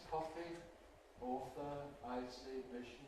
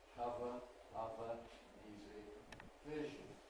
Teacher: top row, the ‘voiceless’ ones: ‘coffee’ [ˈkɒfi], ‘author’ [ˈɔːθə], ‘icy’ [ˈaɪsi], ‘mission’ [ˈmɪʃn̩] Bottom row, the ‘voiced’ ones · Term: Fricatives